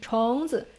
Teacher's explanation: we can hear a clear neutral tone, right? It's super short at the end.